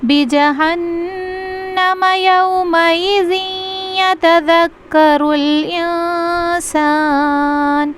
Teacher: یومئذ یہاں پہ غنہ کے ساتھ ملائیں گے